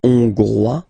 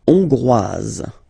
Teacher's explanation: final S not pronounced for the masculine form, and then you pronounce it here for the feminine form